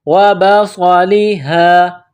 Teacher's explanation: صاد میں سیٹی کی آواز پیدا کرنا ہے، صاد کو موٹا پڑھنا ہے